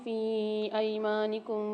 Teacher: فی ایمانکم میں فا کو 3 سے 4 الف میں دار کھینچ کے پڑھیں گے۔